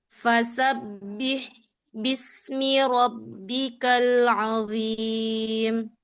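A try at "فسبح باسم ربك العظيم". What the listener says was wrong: Ya, berarti haknya itu kurang ya. Kurang makhrajnya itu kurang di tengah. Jadi pertama sudah jelas dia bunyi haknya, udah waktu sudah mengalir masih sebagian itu sudah hilang. Sudah naik ke bawah, sudah turun ke bawah ke makhraj yang huruf H besar.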